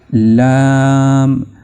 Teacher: लाम की आवाज जुबान के दाएं और बाएं किनारे के दाढ़ों से मिलने से पैदा होगी। आप लाम यानी आप जब दाढ़ों के साथ अपनी जुबान के दाएं और बाएं हिस्से को टकराएंगे तो लाम की आवाज सही तौर से पैदा होगी।